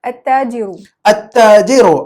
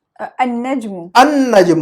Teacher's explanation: جس حرف کی آواز زبان کی مدد سے نکل رہی ہے, زبان کی نوک یا زبان کے سائڈ سے, تو پھر وہ جو ہے نا وہ لام کی آواز کو نہیں نکالیں گے